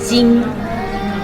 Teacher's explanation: But we Chinese people or we Shanghai will say without the on you drop we drop the G sound